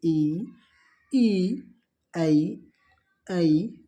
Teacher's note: ये जीभ के अगले भाग से बोले जाते हैं। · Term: अग्र स्वर